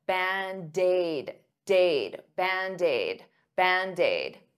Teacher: band aid is two words but to pronounce them like one I'll take that D and transfer it to the vowel